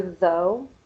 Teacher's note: your tongue goes in between your teeth outside a little and you can feel your vocal cords